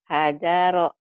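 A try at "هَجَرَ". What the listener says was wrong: Ha, lembutin lagi. Hajaro lagi Bu.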